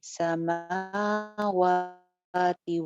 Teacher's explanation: میم پہ بھی کھڑی زبر, واؤ پہ بھی کھڑی زبر, دونوں کو ایک جتنی لینتھ کے ساتھ پڑھنا ہے